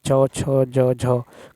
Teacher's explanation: चवर्ग जैसे च छ ज झ का उच्चारण स्थान भी तालु है